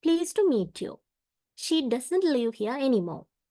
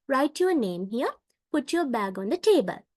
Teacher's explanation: this is when the pitch of the voice Falls at the end of a sentence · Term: falling intonation